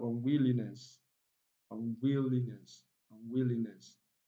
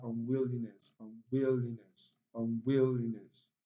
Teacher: And nest contains a sure sound, is also not stressed. So the only syllable that is stressed is will, will.